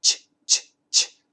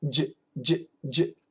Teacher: The CH. Ch, ch, ch. There's no vibration. The J. J, j, j. There's vibration. The CH we touch.